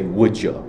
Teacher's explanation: when you say would you you usually say would you with a jaw sound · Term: ja sound